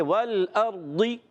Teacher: لام کو نہیں ہلائیں گے، را کو بھی نہیں ہلائیں گے · را ساکن سے پہلے زبر آ جائے، را کو پر پڑھیں گے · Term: را پر